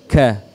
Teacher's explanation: Pangkal lidah kita disentuhkan di langit-langit lebih depan sedikit dari huruf qaf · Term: huruf kaf